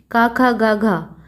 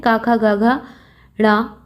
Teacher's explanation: अब का वर्ग के 4 जो व्यंजन है, 4 जो वर्ण हैं, का खा गा घा, ये चारों, इनका उच्चारण कहाँ से होता है? इनका उच्चारण होता है कंठ से, कंठ से, यानी कि गले से इनका उच्चारण किया जाता है